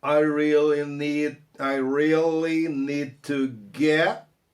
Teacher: Olha o D que vai morrer por causa do T do to.